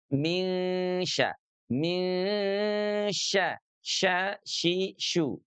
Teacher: Jadi dengan demikian sahabat Al-Qur'an huruf syinya sudah kita bahas ya. Bagaimana makhraj daripada huruf syin yaitu tengah lidah kita yang diangkat ke langit-langit. · Ketika tengah lidahnya naik ke arah langit-langit, maka aliran nafasnya itu dia terhambat dan pada akhirnya menyebar. Kan gini, tengah lidah itu kan dia rada bulat gitu ya di dalam mulut itu ya tengah lidahnya gitu.